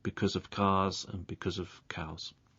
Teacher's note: the sound at the end of because linking to the word of in its weak form